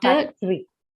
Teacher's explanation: The second syllable t has the vowel schwa in it, · After t, you have a schwa sound there.